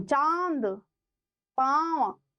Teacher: मुख से हवा नाक से हवा साथ में निकलती है। उसको अनुनासिक नाक के पीछे से उच्चारण ओ चांद पांव ना अ की मात्रा बोले तो एक अनुनासिक इसीलिए बोला गया।